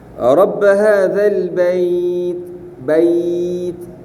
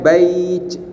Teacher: huruf ta di belakang gigi depan atas. Kita letak situ pun insya-Allah dia tak akan pi ke huruf jim, bait ini.